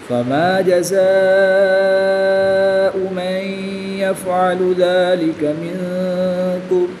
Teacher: الف مدہ کے بعد حمزہ اسی کلمے میں ہے تو یہاں پر مد متصل ہوگی. 3 سے 5 تک کھینچ کر پڑھیں گے